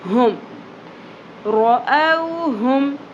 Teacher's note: ہا اقصی حلق سے، حلق کی گہرائی سے، حلق کے سب سے نچلے حصے سے